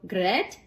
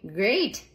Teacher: But then something called the Great Vowel Shift began to happen. And words with the eh sound began to be pronounced with the higher a sound